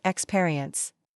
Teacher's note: experience has the stress on the second syllable, not the first